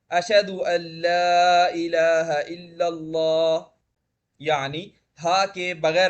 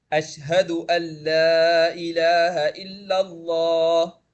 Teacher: صحیح طریقہ یہی ہے کہ ہا کو مکمل طور پر ادا کیا جائے